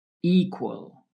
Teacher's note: With equal, the stress is on the first syllable